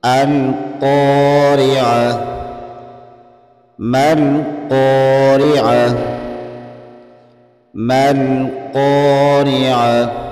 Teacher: قاف حروف مستعلیہ میں سے ہے، اس کو موٹا پڑھیں گے، را کے نیچے زیر ہونے کی وجہ سے را کو باریک پڑھیں گے، اور یہ گول تا وقف کی صورت میں ہا بن جاتی ہے۔